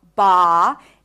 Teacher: body ah the mouth is open buddy Body Buddy Body Buddy body has the ah as in Father sound body so you need to drop your jaw ba and take your time this is the primary stress body